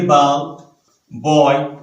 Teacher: जो ये consonant sound है, ये हम पहले समझेंगे कहां पैदा होती है। होंठों पे पैदा होती है। B, होंठ इस एयर पैसेज को ब्लॉक करते हैं। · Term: consonant sound B